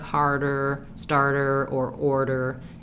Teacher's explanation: But basically, you're gonna benefit from really pulling that R out and then trying to put it back into the word, making sure you don't lose that tight back American R